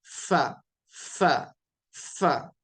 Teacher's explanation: यह जो निचले होठ की जो तरी होती है गीला हिस्सा जो होता है उसको ऊपर के दांत लगाएंगे · نچلے ہونٹ کی جو تری ہوتی ہے، گیلا حصہ جو ہوتا ہے، اس کو اوپر کے دانت لگائیں گے اور کہیں گے فا فا فا.